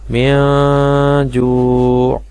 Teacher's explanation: نون ساکن اور تنوین کے قاعدوں میں سے ہے اخفا، تو یہاں پہ ہم نون کی آواز کو ناک میں چھپا کر پڑھیں گے